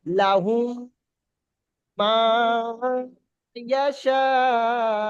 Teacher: প্রথমে মিম সাকিনটাকে দ্বিতীয় মিমটার সঙ্গে মিলিয়ে গুণনা করে পড়তে হবে।